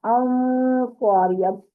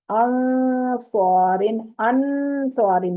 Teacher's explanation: نون کی آواز کو ہم نے چھپا دیا ناک کے اندر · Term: اخفا